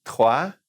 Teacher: 3 is R in the back